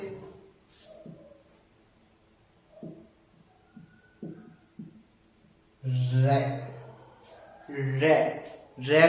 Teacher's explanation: ठीक है जी की नोक र जीव की जो नोक है वायु से रगड़ खाकर कंपित कांपती है ठीक है उसे लुंठित या कंपित व्यंजन कहते है